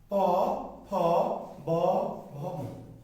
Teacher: প বলতে চাইলে অবশ্য আপনাকে দুটো ঠোঁটকে কি স্পর্শ করতে হবে।